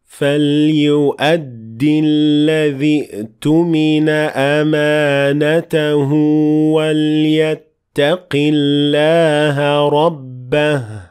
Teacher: Notice how I ignored Hamzat al-Wasl when I kept on reading